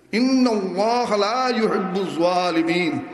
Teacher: লা না টানলে এখানে অর্থ বিপরীত হয়ে গেছে।